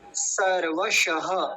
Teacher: पहले दंती सकार आ रहा है फिर तालव्य सकार है तो दोनों का उच्चारण अलग अलग स्पष्ट होना चाहिए